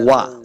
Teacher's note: واو کو جب پڑھیں گے دونوں ہونٹ گول کرنے ہیں تب واو کا مخرج صحیح ادا ہوگا